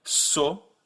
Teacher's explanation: You start at O and then you end at U, so you go so. The French version stays put. There's no U at the end. So to compare them, you have so in French versus so in English.